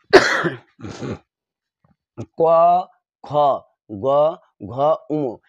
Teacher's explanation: এই বর্ণগুলো উচ্চারণ করতে কণ্ঠকে চাপ প্রয়োগ করে, যার কারণে এটাকে কণ্ঠবর্ণ বলে। যেমন আমি যদি এখানে কণ্ঠ ধরে কথাটা বলি তাহলে হয় না, কারণ ক, খ, গ, ঘ হয় না, কণ্ঠের উপর চাপ পড়ে।